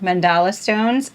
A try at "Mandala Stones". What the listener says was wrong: It's with a D, not a C.